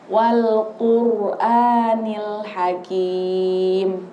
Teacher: rnya tebal jadi dia agak maju sedikit · Nah, ro-nya itu bukan qur biasa dibacanya, bukan qur gitu aja. Tapi ro-nya ro tafkhim, tebal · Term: ro tafkim